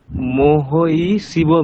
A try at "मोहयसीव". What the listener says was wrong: আচ্ছা, মোহয় ই আছে কি ওখানে? আপনি যেটা উচ্চারণ করছেন ওটা ওখানে ইয়কার আছে নাকি ই আছে? আপনি যেটা উচ্চারণ করছেন সেটা হচ্ছে ইয়কারের সঙ্গে যদি একটা হ্রস্বইকার থাকতো তাহলে মোহয় ই।